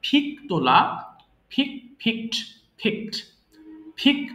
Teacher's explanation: আমি লিন হেলান দেওয়া সবাই বলবো লিন লিন্ড লিন্ড ফিক তোলা ফ অর্থাৎ দুই ঠোঁট একসাথে করে আমরা ফ উচ্চারণ করব